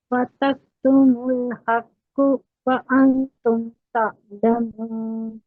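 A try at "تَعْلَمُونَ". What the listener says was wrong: तअलमून नहीं, आइन को झटके के साथ नहीं पढ़ना। आइन में हमेशा थोड़ी सी ड्रैगनेस होती है और हमजा में झटका होता है। तअलमून हमजा की साउंड आ जाएगी, तो लोग क्या समझेंगे आप हमजा पढ़ रहे हैं।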